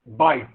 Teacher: Yes, which means B is an oral sound. The active articulator is the lower lip. The passive articulator is the upper lip. · The vocal cords are held loosely together, thus they vibrate and the sound is voiced.